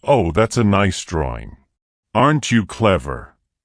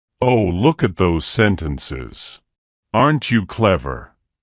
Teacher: sometimes for some reason when adults talk to Children their voice goes up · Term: caretaker talk